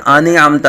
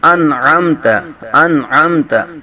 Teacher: نون ساکن ہے حمزہ کو نون کے ساتھ ملا کے پڑھیں گے